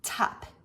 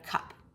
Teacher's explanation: The specific process I'm describing here would be called velar fronting, taking a consonant that should be produced in the back of the mouth and moving it to the front